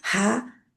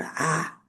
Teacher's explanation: हा की आवाज जबर के साथ बाहर निकलती है और आ अंदर ही रहती है